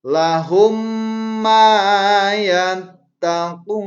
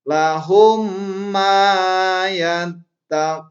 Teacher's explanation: Contoh bacaan Lahum ma yattaqun. Lahum ma, seolah-olah mimnya satu, padahal ketika ditulis ada dua. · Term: idgham mislan